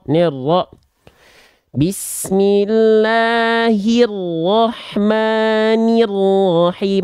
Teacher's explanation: Ni-nya tetap jelas karena kasroh dia. Jangan terkontaminasi dengan huruf ro-nya. Nah, ini contoh bahwasannya penting sekali peran tengah lidah untuk menyempurnakan harokat kasroh.